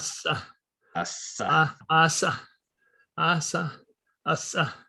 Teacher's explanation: maybe a little bit of creaky voice in the adjacent vowels